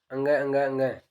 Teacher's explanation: इनका उच्चारण करते हैं तो नाक से अपनी ध्वनि निकलती है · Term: नासिकी व्यंजन